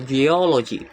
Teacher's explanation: Uh the stress is on the second syllable uh geology